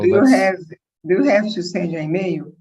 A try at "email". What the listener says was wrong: Email is Portuguese. Email. So the E gets the emphasis in English. Email.